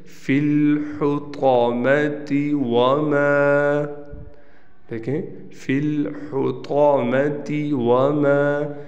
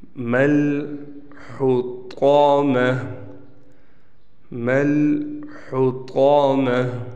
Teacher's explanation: فی الحطامۃ وما، دیکھیں فی الحطامۃ وما، لیکن جب وقف کیا تو قاعدہ ہم نے پڑھایا تھا آپ کو کہ گول تا وقف کی حالت میں ہا بن جاتی ہے، چھوٹی ہا سے بدل جاتی ہے